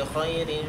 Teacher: Kha itu adalah salah satu huruf isti'la, jadi harus ditebalkan.